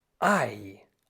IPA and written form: aɪ (Ei)